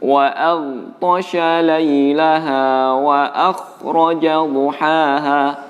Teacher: huruf ghain yang bersukun dibulatkan dalam pembacaannya, bulatkan bibir dalam membacanya